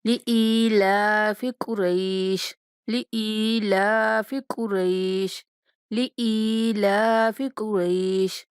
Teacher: حمزہ کے بعد جائے مدہ ہے تو حمزہ کو تھوڑا کھینچ کے پڑھیں گے، اور لام کے اوپر کھڑا زبر ہے تو اس لیے لام کو بھی ایک الف کے برابر کھینچیں گے۔ قاف کو موٹا اور را کے بعد جائلین ہونے کی وجہ سے تھوڑا نرمی کے ساتھ پڑھیں گے۔